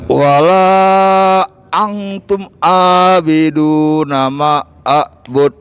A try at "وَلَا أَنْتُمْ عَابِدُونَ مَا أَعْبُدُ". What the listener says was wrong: Ma'abud. Ma-nya panjang loh Pak.